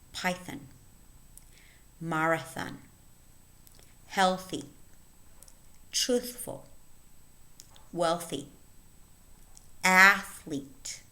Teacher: words in which the voiceless inter dental fricative occurs in the middle